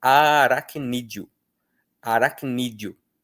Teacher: Sim, o D, O são uma sílaba só, porque na hora da pronúncia, esse E vira um I bem fraquinho